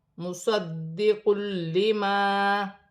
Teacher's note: دال مشدد ہے، جماؤں کے ساتھ ادا کیا جائے گا